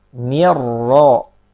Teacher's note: Kalau hurufnya berharokat fathah atau dhammah maka tebal. Nirra, ro-nya berharokat fathah maka tebal.